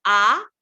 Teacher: आ कहेंगे, आ दिख भी रहा होगा आपको, आ मेरी जीभ बिल्कुल नीचे है, आ। बट नाउ यू से ई, यू कैन सी माई जीभ हैज गॉन अप।